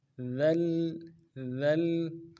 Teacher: لام کے اوپر تشدید زور دیں گے. ذل ذل، اور لام کو اگلے لام کے ساتھ ملانا ہے.